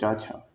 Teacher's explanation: चा वर्ग जो होता है उसका उच्चारण स्थान तालु से होता है